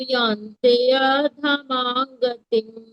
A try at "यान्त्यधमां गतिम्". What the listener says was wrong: यान्त्य, य नहीं करना है, यान्त्य, त्य, त्य, यान्त्य।